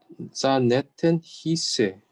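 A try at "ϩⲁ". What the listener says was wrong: not sa. It's ha.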